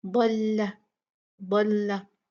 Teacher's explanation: और लाम को मोटा नहीं करना